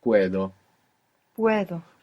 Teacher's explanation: the D is quite soft when it comes in the middle of a word in Spanish rather than a hard D